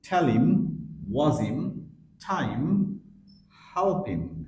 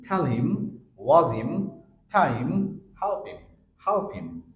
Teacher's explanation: পরেরটা দেখেছেন হিম, হিম এটাকে আমরা বলি হিম, বাট হিম থাকছে না, সাউন্ড হচ্ছে ইম, ইম।